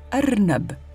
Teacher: la Hamza, une toute petite lettre qui correspond à un coup de glotte ou une attaque vocalique en début de mot